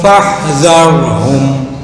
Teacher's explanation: Fa itu makhrajnya bibir bawah dengan gigi atas. Fa bukan pa.